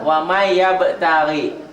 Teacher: Waman ditulisnya, dibacanya jadi n-nya hilang tuh kan. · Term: idgham dengan dengung